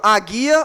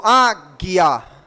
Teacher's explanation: Isso é um dígrafo, né? Ninguém está escutando a letra U.